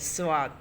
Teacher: আপনি জিহ্বার আগা তার বরাবর ঠিক উপরের তালুর সঙ্গে লাগাইয়া উচ্চারণ করুন সোয়াদ। দেখেন তো আপনার জিহ্বার আগাটা তার উপরের তালু, আপনি হাত দিয়ে তালুটা স্থান নির্ধারণ করুন, সেখানে আগাটা দিয়ে দেন সোয়াদ।